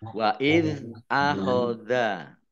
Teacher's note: Zal sukun jangan dipantulkan ya, ini bukan qalqalah.